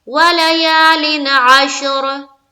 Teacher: नून की आवाज को सिर्फ जाहिर करेंगे और जल्द पढ़कर निकलेंगे। यहाँ इख्फा की तरह छुपाना नहीं है, देर नहीं लगानी है, ठीक है। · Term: इजहार